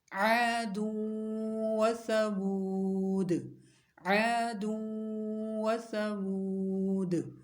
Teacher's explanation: تو لمبا کرنا ہے اس کو ایک الف کے برابر، اور حالت وقف میں دال پر قلقلہ کریں گے، کیونکہ دال کو ساکن کر دیں گے نا، تو دال پر قلقلہ ہوگا